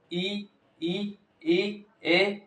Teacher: हमारी जबान कहां रही है आगे की ओर इसलिए इसको अग्र स्वर बोला जाता है